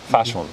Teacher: so japanese fat the mouth doesn't really widen so much the sound the air doesn't aspirate as much